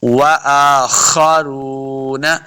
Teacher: دونوں گول ہوں گے تب واو کا مخرج سے یاد ہوگا۔ حمزہ کے اوپر کھڑی زبر، اس کو دو حرکات لمحہ کرنا ہے ، وآخرون، خا حروف مستعلیہ سے اس کو موٹا پڑھنا ہے،